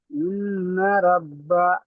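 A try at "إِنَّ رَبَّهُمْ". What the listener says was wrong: জি ইন্নাটা একটু পূর্ণ করেন কেন বলেন তো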